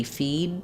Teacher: I can say feed, but most likely you're not going to hear that D.